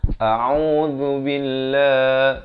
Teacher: lafz jalalah dibaca nipis 2 harakat.